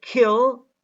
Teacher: the vowel e loses some of its voicing because of the aspiration of k. The first part of the vowel in this example is not voiced because the aspiration of k causes it to lose some of its voicing.